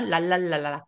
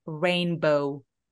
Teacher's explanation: 한국어의 리을은 천장에 닿는데 그게 아니라 입술을 일단 쭉 내미시면 아마 천장에 닿지 않게 될 거예요